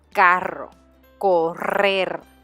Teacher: R makes a longer R sound.